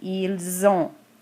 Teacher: I'm going to pronounce that S at the end of il as a Z. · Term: liaison